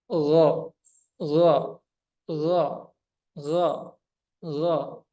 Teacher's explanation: rileks saja jadi yang menyebabkan suara itu Menjadi o seperti o suaranya menjadi tebal suara menjadi berat berisi itu karena lidah bagian belakangnya naik